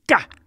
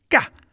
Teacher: It's a cerebral K, which means it's ka. If you can pronounce K without any breath coming out of your mouth, then you will get what that sound is. It's like the sharpest sound that you can make, sort of ka.